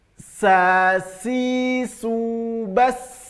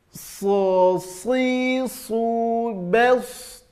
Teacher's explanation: Kalau sin huruf tipis, huruf so-nya huruf tebal.